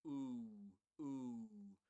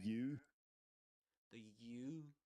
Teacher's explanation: some phoneticians claim that this is a diphthong, right, rather than a long oo sound, which means diphthong means that it's made up out of two sounds.